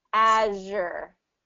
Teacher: sound is the same so it's the same position as sh so it's the same position as the sh sound but it's voiced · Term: z h sound